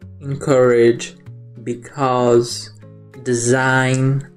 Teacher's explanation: A vogal e no início das palavras tem a pronúncia de i